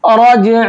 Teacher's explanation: را کو موٹا کر کے پڑھیں گے اور جیم میں کریں گے قلقلہ